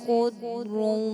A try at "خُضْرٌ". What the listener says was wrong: خضر تھوڑا سا غنہ کمزور ہوا دوبارہ سے